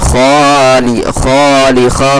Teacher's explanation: خا خرا زبر خا، تھوڑا سا کھینچ کر کے پڑھیں گے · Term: کھڑا زبر